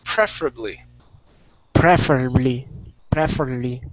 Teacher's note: stress at the very beginning